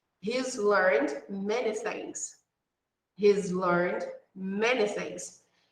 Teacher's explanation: after voice sounds the apostrophe is pronounced as z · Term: voiced sound